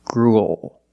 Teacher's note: it ends with a dark L because the L is after a vowel it's at the end of the word after a vowel that's